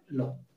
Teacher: ল উচ্চারণ করার সময় দেখো আমাদের জিভ সোজা হয়ে একদম দন্তমূলকে স্পর্শ করবে, একদম দাঁতের নিচ অংশটা থেকে সোজা স্পর্শ করবে এবং শ্বাসবায়ুগুলি জিভের দুপাশ দিয়ে বেরিয়ে আসে। সোজা জিভের কারণে বেরোতে পারে না, জিভের দুপাশ দিয়ে বেরিয়ে আসে, দুপাশ দিয়ে বেরিয়ে আসে বলে এর নাম হয়েছে পার্শ্বিক। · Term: পার্শ্বিক ধ্বনি